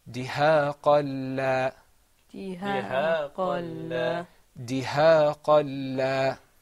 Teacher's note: when you have a lam, there's no ghunna. So we're not going to draw out the sound.